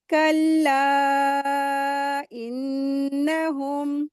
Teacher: मद्दे जायज़ हो रहा है, 4 हरकत खींचेंगे, नून मुशद्दद है, गुन्ना करेंगे।